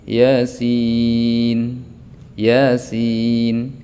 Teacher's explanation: Iya-nya satu alif, sin-nya tetap panjang.